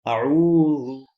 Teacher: عین کے بعد واو تھا، ہونٹ گول ہوں گے، لفظ واو ادا ہو جائے گا